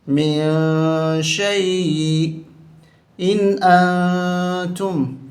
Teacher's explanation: ناک میں آواز چھپا کر پڑھنا ہے ہمیں. ان یہاں غنہ نہیں ہوگا کیونکہ نون ساکن کے بعد حمزہ حرف حلقی ہے، حرف حلقی آ جائے تو نون ساکن پہ غنہ نہیں ہوتا. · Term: اخفا